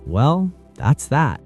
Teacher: A falling tone, Well, with a period, can show finality or resignation